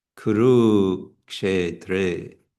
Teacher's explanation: we have a short kuru, but the second u is going to be long